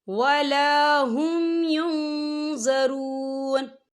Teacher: لا یخفف عنہم العذاب ولا هم ينظرون، یہ دیکھیں ولا هم یہاں نون ساکن ہے، نون ساکن کے بعد جو ہے ضا آ رہا ہے اور ضا جو ہے اکفا کا ورڈ ہے، تو ہم یہاں اکفا کریں گے، نون ساکن کی آواز کو ناک میں چھپائیں گے